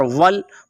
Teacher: وا کو گول کریں گے اور آگے لام کے ساتھ ملائیں گے کیونکہ لام کے اوپر آپ کو جزم نظر آ رہی ہے۔